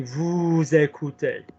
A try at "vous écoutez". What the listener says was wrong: Lovely, but I need you to watch lesson 1 properly, because that's a bit crap in the throat.